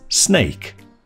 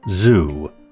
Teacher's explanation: made by disrupting the airflow through a narrow channel formed by the tip of the tongue and the alveolar ridge, just behind the top teeth, to cause a hissing sound. The s sound on the chart is shown in blue, which means it's unvoiced, while the z sound is shown in green, which means that it's voiced. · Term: alveolar fricatives